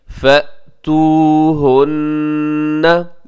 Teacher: यहाँ नून मुशद्दद है, यहाँ गुन्ना कीजिएगा।